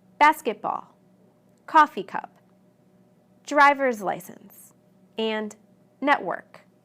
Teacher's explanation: Where did I put the stress? Yes, on the first word of each compound noun.